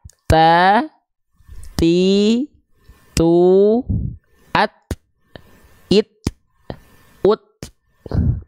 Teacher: Jadi huruf ta cukup dilafalkan dengan perecikan nafas ya bukan mengalir nafas tapi hanya berupa perecikan nafas ya karena dia disandingkan dengan sifat yang namanya adalah syiddah gitu